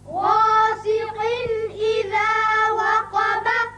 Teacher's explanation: غاسق، قاف کے نیچے دو زیر تنوین ہے یعنی نون کی آواز نکلتی ہے، اب اس کے بعد حروف حلقی میں سے حمزہ بشکل الف آ گیا لہذا یہاں اظہار حلقی ہوگا یعنی قاف کی تنوین کا نون ظاہر کر کے پڑھیں گے۔